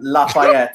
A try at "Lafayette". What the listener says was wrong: That last word has 3 syllables, sir.